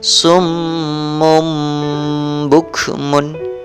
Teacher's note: membalik bunyi suara nun mati dan tanwin menjadi bunyi mim mati ketika bertemu dengan satu huruf iqlab, yaitu berupa huruf ba